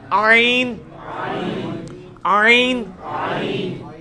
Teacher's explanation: حا کا مخرج جو ہے نا یعنی وسط حلق ادھر ہی سے یہ عین بھی نکلنا ہے